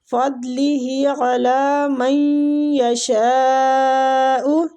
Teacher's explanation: غین اور دواد دونوں پور حروف ہیں